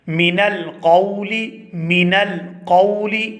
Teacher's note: من القول، من القول، یہاں جو نون کو ہم بغیر تشدید کے پڑھ رہے ہیں اور جلدی سے ادا کر رہے ہیں اسے کہتے ہیں غنہ آنی